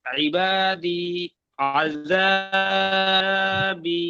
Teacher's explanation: আহ, তা ইয়া সাকিনের ডান দিকে জের আছে, যেটি হলো ইয়া মাদ্দা, ইয়া মাদ্দা এক আলিফ পরিমাণ টান দিয়ে পড়তে হয়।